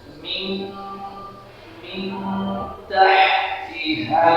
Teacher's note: খুব খেয়াল রাখতে হবে, উচ্চারণটা হবে মিন, নাকের বাসি থেকে নাসামূল থেকে নাসিকাগ্র থেকে আমরা গুনগুন আওয়াজ করব এবং চন্দ্রবিন্দুর ন্যায় উচ্চারণ করব